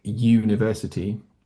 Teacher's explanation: But there's also another pronunciation where U is at the beginning of a word, like university, mm, and that's not quite the same because I'm adding. If you kind of listen closely, it's like I'm adding a Y letter, university at the beginning.